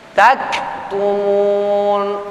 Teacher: Ada sifat hamas pada kaf yang sukun, kaf yang mati.